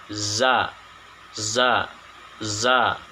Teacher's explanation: suaranya agak sedikit berdesir atau safir